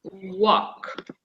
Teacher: in the pronunciation, we don't pronounce the L. The L is silent.